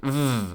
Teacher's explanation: you can very easily feel the friction between your lower lip and your upper teeth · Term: fricative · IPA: /v/